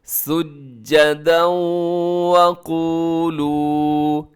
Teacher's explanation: سجدا وقولوا، یہاں پر ادغام ہو رہا ہے سجدا، کیونکہ دال کے اوپر تنوین ہے، تنوین کے فوراً بعد واو یرملون کا تو ادغام ہوگا، جسے ادغام یرملون بھی کہا جاتا ہے، اور اس کو ادغام ناقص بھی کہا جاتا ہے، اور اس میں ساتھ کیا ہے کہ آپ نے آواز کو ناک میں بھی لے کے جانا ہے۔ سجدا وقولوا، دونوں کو برابر لمبا کرنا ہے۔